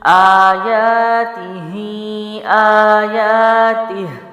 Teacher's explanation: تین الف لمبے نہیں ہوں گے بلکہ کیا ہوگا، تینوں کو ایک ایک حساب سے ایکولی لمبا کرنا ہے، کیسے، حمزہ کھڑا زبر آ، یا کھڑا زبر یا، تا زیر تی، ہا کھڑی زیر ہی، آیاتہ، آیاتہ۔